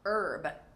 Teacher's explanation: Herb, from the French, so we do not pronounce the H.